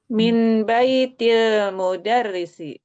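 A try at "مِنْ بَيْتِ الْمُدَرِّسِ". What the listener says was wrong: Ya, betul sekali.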